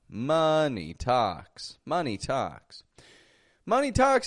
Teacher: notice that syllable stress strong weak strong